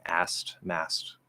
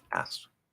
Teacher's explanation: we drop the K in order to make it easier and faster to speak